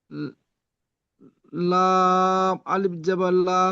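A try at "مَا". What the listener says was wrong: না ভাই, এটা লাম নয়, এটা পড়ুন, এটা কি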